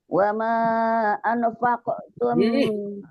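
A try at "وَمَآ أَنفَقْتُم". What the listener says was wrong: Masa izhar sih, Pak. Buru-buru mulu.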